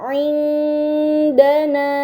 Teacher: ini dinamakan ikhfa hakiki, maka nun sukun harus dibaca secara samar dengan gunnah yang dipanjangkan